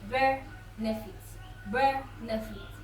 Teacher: But for the word benefit, benefit, the stress is not on feet. The stress is at the first part of the word, on the first syllable